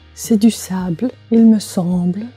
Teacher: При этом «r» или «l» произносится низким голосом, практически шепотом, происходит своего рода оглушение